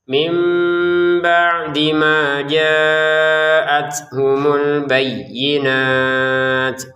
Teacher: Kemudian ada nun sukun lagi ya bertemu dengan ba, maka dibacanya mim.